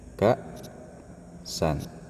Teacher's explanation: disukun maka huruf hamzah itu menahan suara kita misalnya ee kaan ka ya kan misalnya kata-kata pada lafaz ksan · Misalnya kata-kata pada lafaz ka'san, misalnya gini, ada kata gini ya, ka'san. Nah, ini huruf hamzah ini taib pada kata-kata ini menahan suara, ya, suaranya nggak lepas.